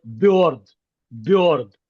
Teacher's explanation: it's basically messing up the consonant and then saying o instead of uh because uh doesn't exist in Ukrainian or Russian